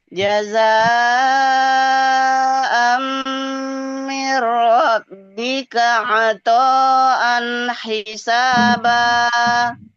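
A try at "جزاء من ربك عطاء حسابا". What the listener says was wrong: Panjangkan toknya, kurang panjang. Bukan ro-nya, mbak tasdid itu. Robbi bukan Robbi.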